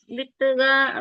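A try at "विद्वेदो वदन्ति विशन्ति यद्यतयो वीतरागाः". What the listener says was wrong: वित्त नहीं ना, बोलते हैं ना पित्त, पित्त नहीं है ये, वीत है। की मात्राओं पे ध्यान दो ना, वीत रागा।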